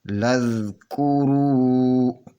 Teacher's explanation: لذکرو، را پیش و رو، اور وا سے پہلے یہ پیش ہے تو یہ واو مدیہ ہوگی، اس کو دو حرکت کے برابر کھینچ کر پڑھیں گے